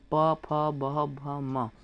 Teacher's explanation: जो प वर्ग होता है, प, फ, ब, भ, म, इन पांचों का उच्चारण ओष्ठ से होता है